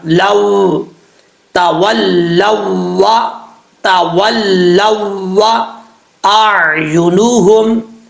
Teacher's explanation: واو کے ساتھ جب لام کو ملائیں گے واو کو بھی تھوڑا سا زور دے کے پڑھیں گے